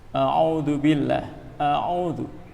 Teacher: Ini hamzahnya dibaca dengan tarqiq.